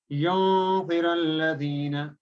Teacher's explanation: So when you're saying yunziralladhina, you're not actually pronouncing the noon completely, but it has an open ending. You're just transitioning over to the next letter, kind of. · But we have to hide the sound of noon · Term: gunna